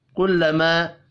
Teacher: الف مدہ ہے ایک الف کے برابر کھینچ کر پڑھیں گے